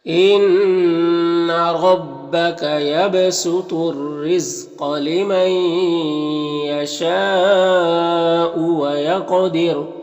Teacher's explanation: قاف یہاں پر حروف مستعلیہ میں سے پر پڑھیں گے اور قاف حروف قلقلہ میں سے بھی ہے تو قاف میں قلقلہ بھی ہوگا، یعنی قاف کو ادا کرتے وقت اس کی آواز اپنے مخرج سے ٹکر کھا کر الگ ہو جائے گی · وقف کریں گے تو را کا پیش سکون سے بدل جائے گا، تو را کو باریک پڑھیں گے کیونکہ را ساکن سے پہلے دال کے نیچے زیر ہے